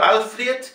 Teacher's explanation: Alfred, fíjense, la E es I, no es E.